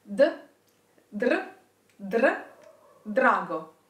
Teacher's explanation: put your tongue behind your upper teeth as if you were to say D, and then keep it there and let the air flow and the tongue vibrate. If it's easier for you, start pronouncing a D and then add the R.